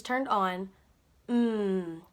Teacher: the lips are together and their voice is turned on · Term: humming sound